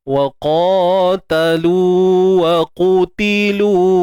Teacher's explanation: Okey, pun sama, lu mak asli. Huruf qaf kena tebal. Qaf baris depan muncung bibir lah, sebab baris depan.